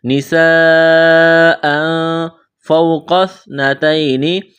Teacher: واو ساکن سے پہلے زبر، واو لین ہے، بغیر کھینچ کے پڑھنا ہے